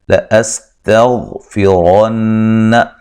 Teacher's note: یہاں غین کو موٹا ادا کریں گے، را کو موٹا ادا کریں گے، را کے اوپر زبر ہے، ٹھیک ہے، غین کو ہلانا نہیں ہے۔